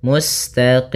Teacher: Kemudian pada lafal qim di sini ada bacaan mad arid di sukun. Itu boleh kita panjangkan dua harakat, boleh empat harakat, boleh pula menjadi enam harakat.